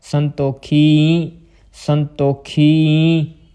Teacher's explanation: ਈੜੀ ਬਿਹਾਰੀ ਆਵਾਜ਼ ਦੇਣੀ ਆ, ਨਾਲ ਪੂਰਾ ਈੜੀ ਬਿਹਾਰੀ ਦੇ ਉੱਤੇ ਬਿੰਦੀ ਦੀ ਆਵਾਜ਼ ਵੀ ਆਉਣੀ ਚਾਹੀਦੀ ਆ